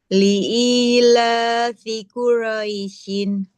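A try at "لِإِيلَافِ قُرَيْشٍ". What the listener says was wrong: Kalau mau diwakaf gak boleh Quraisyin. Li'ilafi Quraisy.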